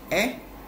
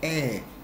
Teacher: the difference between this first one, eh, short sound, and eh, longer sound